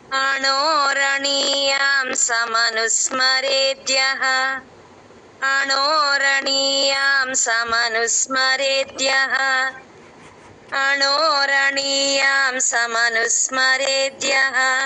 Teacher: start చేస్తాం అణో అణో అణ దగ్గర కొంచెం పైకి లేపాలి అణోరణీయం తమనుస్మరేద్యః అక్కడ రేద్యః దగ్గర రే కొంచెం లేపితే కొంచెం రేద్యః అంటే మీకు కొంచెం టూన్ బాగా వస్తుంది